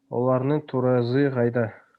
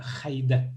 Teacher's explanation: Ну вот у вас, наверное, К произносится, а у нас Х вот, четко.